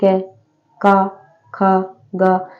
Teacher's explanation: जो क वर्ग के है वो गले से बोले जाते है जसे क का ख ग तो गले से आवाज निकल तो